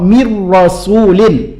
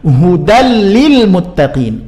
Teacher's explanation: memasukkan huruf yang pertama ke huruf yang kedua, tapi bi ghairi gunnah, tidak disertai dengan gunnah atau dengung. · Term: idgham bi ghairi gunnah